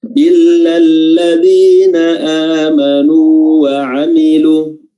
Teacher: Jadi waw pertama sukun, kita panjangkan dulu 2 harakat, nu amanu 2 harakat, lalu kita sambung dengan waw yang berharakat fathah. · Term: waw sukun